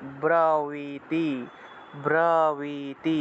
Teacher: এই যে ব্রবতী শব্দটা আছে, ব্রবতী, এই ক্ষেত্রে দেখুন প্রথম বয়ের নিচে রফলা আছে, এটা হলো কিন্তু বর্গীয় ব, আর পরের যে বটা আছে এটা হলো অন্তস্থ ব, তাহলে ব্রবীতি, ব্রবীতি, অর্থাৎ প্রথমটা ব উচ্চারণ করব, পরেরটাকে ওয়া উচ্চারণ করব